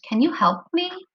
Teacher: so I'm gonna circle the word me can you help me when you ask a question sometimes you hear your voice kind of go up at the end